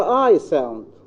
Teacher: The glide begins at a point slightly behind the front open position and moves in the direction of the position associated with eh sound.